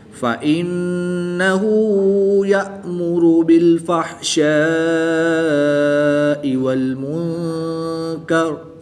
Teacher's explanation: نون ساکن کے بعد کاف حروف اخفاء میں سے ہے تو یہاں پر اخفاء ہوگا، یعنی غنہ زمانی کر کے پڑھیں گے